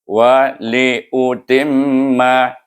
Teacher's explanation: iaitu timma, iaitu dia bunyi berdengung. Itu dengan 2 harakah sebab mim bertasydid